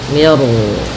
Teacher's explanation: di sini mi-nya tipis, ro-nya tebal. Nah, di sini namanya ro tafkhim.